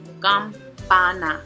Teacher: So the prosodic accent is going to be on the second to the last, so it'll be on that pa.